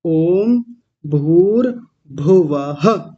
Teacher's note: वो विसर्ग आना चाहिए, छोड़ के नहीं जाना